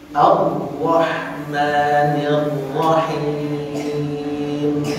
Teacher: Nun itu gunnah, maka matinya di hidung khayshum.